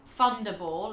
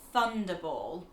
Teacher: he pronounces the TH sound F